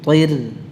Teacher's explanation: Ya, ra-nya tipis. Walaupun sebelumnya ta, itu tidak mempengaruhi pengucapan ra-nya.